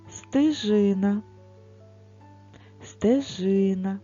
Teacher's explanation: ми говоримо Трошки тихіше інколи може почутися звук и стежина стежина звук е не під наголосом тож ми його проговорюємо ближче до звука и